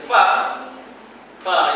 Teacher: fa fa yang gigi atas kena taruh bibir bawah